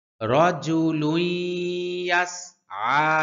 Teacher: আইনের উচ্চারণ সহিভাবে করতে হবে, কণ্ঠনালীর মধ্যখান থেকে একটু ডাবায়া উচ্চারণ করতে হয়, তবে অতিরিক্ত ডাবানো যাবে না